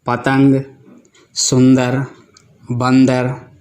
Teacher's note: इनमें अम को अनुस्वार कहते हैं, जिसका उच्चारण नाक से किया जाता है